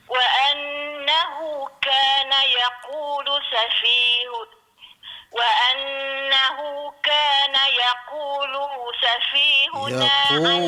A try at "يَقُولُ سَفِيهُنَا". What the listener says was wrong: يقول سفيه. Yaqulu safihuna. Lu pendek. Yaqulu safihuna. Ya, hu tertinggal.